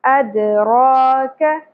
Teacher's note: اد، را، را پر ہوگا اور ایک الف کے برابر کھینچیں گے، کھڑی زبر ہے، اد را ک۔ کاف باریک ہوگا اور زبر کو زیادہ نہیں کھینچنا، کا نہیں پڑھنا، ادرا کا نہیں پڑھنا، ادراک۔